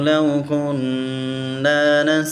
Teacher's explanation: یہاں پر نون مشدد ہے، اس پر غنہ بھی کریں گے